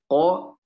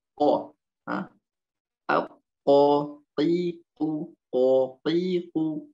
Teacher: Qo, pangkal lidah paling belakang. Pangkal lidah paling belakang. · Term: Qaf